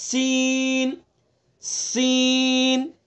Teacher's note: सीन के अंदर सिफत सफीर है सा के अंदर सिफत सफीर नहीं है तो सीन को अदा करते वक्त सिफत सफीर का ख्याल रखेंगे